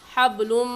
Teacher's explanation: لام پر غنہ کریں گے کیونکہ تنوین کے بعد حروف یرملون میں سے میم آ گیا ہے اس لیے یہاں پر غنہ ادغام کے ساتھ ہوگا، حبلم۔